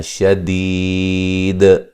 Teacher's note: جب وقف کریں گے تو قلقلہ کو خوب واضح کرنا ہے